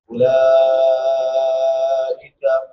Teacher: لام کے بعد حمزہ اسی کلمہ میں ہے، یہاں پہ مد متصل متصل ہوگی، اس کو 3 سے لے کے 5 الف تک لمبا کر کے پڑھیں گے